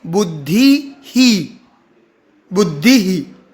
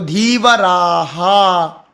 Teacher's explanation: विसर्ग का उच्चारण ह होता है, लेकिन वो जिस भी मात्रा के बाद विसर्ग लगा हो उसी मात्रा का हमें ह के साथ उच्चारण बदल देना है, मात्रा बदल देनी है।